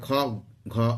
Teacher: মহাপ্রাণ বর্ণ। এখানে শ্বাস বায়ুর বেশি প্রয়োজন হয় বলে মহাপ্রাণ বর্ণ হয়।